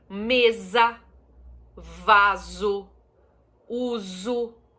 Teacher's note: a letra s no meio de duas vogais tem o som de z